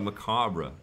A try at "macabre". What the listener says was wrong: The R is silent. Macabre.